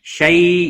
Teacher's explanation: شیء یا لین ہے، تھوڑا نرمی کے ساتھ کھینچ کر ادا کریں گے۔